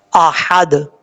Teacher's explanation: اب اس کے بعد ہے احد, حمزہ کے بعد ہا ہے, ہا بریک پڑھا جائے گا, اس کو بھاری ساؤنڈ کے ساتھ پڑھنے کی ضرورت نہیں ہے